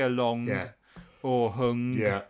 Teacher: it is quite a strong feature of Brummie that they do tend to say the G on the ends